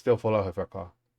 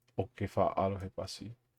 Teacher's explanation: E before he is very often dropped. He says almost always.